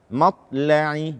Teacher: Membaca ta sukun tanpa qalqalah. Matla'i tidak.